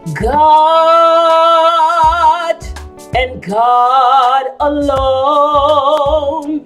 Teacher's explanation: the musical vowel is ah not o